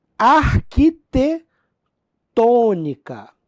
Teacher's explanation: arquitetônica é proparoxítona, tônica na antepenúltima